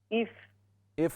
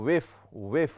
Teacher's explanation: इफ नहीं है ये हमज़ा नहीं है बल्कि वाव है